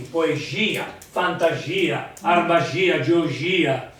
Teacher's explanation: in questo caso è tonico, cioè la I è tonica